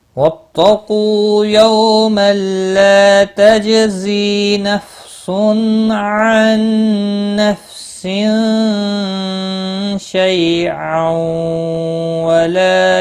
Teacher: ملا کر جب پڑھیں گے تو ادغام با گنہ ہوگا، تنوین کے بعد حروف یرملون کا واو آیا ہے